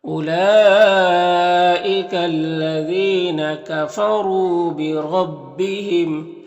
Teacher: کفروا میں را کو پر پیش اور را کو پر پڑھیں گے، یہاں پر واو مدہ ہے ایک الف کے برابر کھینچیں گے۔ بربہم را کے اوپر زبر اور را کو پر پڑھیں گے، اور میم میں اظہار شفوی ہوگا